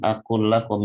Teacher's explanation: Akul lakum bertemunya lam sukun dengan lam yang berharakat. Ini namanya idgham mutamathilain atau idgham mithlain.